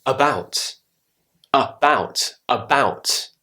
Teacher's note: the a becomes an uh sofa the word about about so the beginning of the word has now got the schwa sound